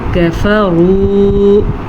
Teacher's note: کاف کو باریک پڑھنا ہے